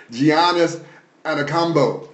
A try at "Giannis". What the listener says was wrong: The G is silent. The G is silent. But not this G here.